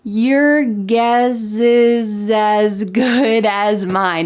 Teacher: And that's what's happening here. We are linking together the S plus a vowel from the next word. · in American English pronunciation, we often link the S with the vowel next to make a Z sound